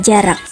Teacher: huruf J seperti pada umumnya dengan ciri hidup, oral, laminopalatal, dan afrikatif